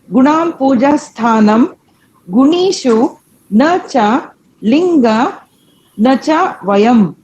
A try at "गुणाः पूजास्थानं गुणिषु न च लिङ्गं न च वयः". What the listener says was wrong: ಒಂದು ಮೊದಲನೇ ಪದ ಗುಣಾಹ, ವಿಸರ್ಗ ಇದೆ, ಕರೆಕ್ಟಾ? ಆಮೇಲೆ ಪೂಜಾ ಸ್ಥಾನಂ, ದೆನ್ ಗುಣೀಷು, ಗುಣಿ ದೀರ್ಘ ಇಲ್ಲ, ರಸ್ಯ. ಸೊ ಗುಣೀಷು na cha lingam, na cha vayaha. Visarga ide, vayam alla.